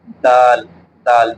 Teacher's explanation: ہماری نوک ہے سامنے کے اوپر والے جو دانت ہیں، تو سامنے کے اوپر والے دانتوں کی جڑ سے زبان کا کنارہ ملنا ہے ، دال دال جہاں سے ہم نے تا پڑھا تھا وہیں